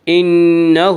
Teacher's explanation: انہ ہا کے اوپر الٹا پیش ہے، الٹا پیش قائم مقام ہے واو مدہ کے، اس لیے الٹا پیش کو 1 الف کے برابر کھینچ کر پڑھیں گے